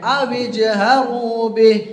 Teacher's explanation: جیم کے اوپر سکون ہے نا، تو جیم پہ قلقلہ کر کے پڑھیں گے